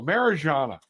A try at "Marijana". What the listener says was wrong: It's a Mariana. Yeah, Anna. It's silent. The J is silent. So Mariana.